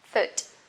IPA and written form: fʊt (foot)